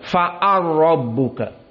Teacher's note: Lam dengan ro dekat. Idghamkan saja.